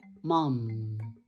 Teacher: No, tiene que sonar a la M, mam, mam. Entonces, al pronunciar mam, esa palabra ocasiona que tus labios queden sellados